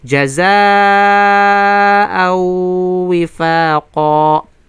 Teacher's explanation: al-mad al-wajib al-muttasil, 4 hanggang 5 na haraka ibibigay natin. Then dito sa pagitan ng hamza na kung saan tanwin at sa waw ay walang iba kundi ay idgham bigun na naqisa.